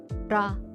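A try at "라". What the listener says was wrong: La. It says R sound. I think I would say it's closer to L sound, but when it comes to the beginning. And then these letters are supposed to be similar to your shape of your mouth, or like how your tongue is.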